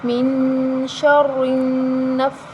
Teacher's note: را کے نیچے زیر ہے تو ہم را کو باریک پڑھیں گے